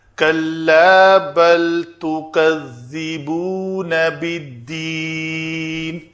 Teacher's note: اگر آپ کی زبان جو ہے اوپر والے دانتوں سے آ کے لگی ہے تو وہ ٹھیک ہے، نہیں تو وہ زا بن گئی، اس کو دوبارہ ادا کریں۔ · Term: ذال کی ادائیگی